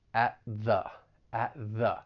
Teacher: There are some overlapping sounds, and this is basically when your tongue is in the same position. So at, your tongue is going to come up and block the air with that stop T, but then you're just going to release right into that voiced TH in the. At the.